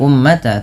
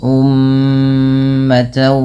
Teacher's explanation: pada lafal mim berharakat tasydid, ini ditahan dulu bunyi suara nya sepanjang 2 harakat karena terdapat hukum tajwid berupa bacaan gunnah.